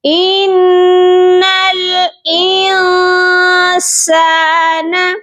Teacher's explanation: ان الانسان، نون مشدد ہے، یہاں پر ہم غنہ کریں گے، نون کے اوپر جب بھی تشدید آتا ہے تو نون پر غنہ لازمی کیا جاتا ہے، اور یہاں پر ہم نے سافٹ غنہ کرنا ہے، یعنی کہ ہم اخفا کریں گے